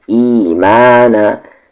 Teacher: सिराती, सिराती। ईमाना, ई को भी खींचेंगे, माँ को भी